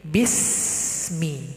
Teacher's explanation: Contoh, bismi, nah, tidak boleh dibaca bise, tidak boleh ada e di situ. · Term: tawallud